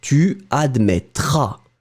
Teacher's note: Ending for tu will be AS. You don't pronounce the final S.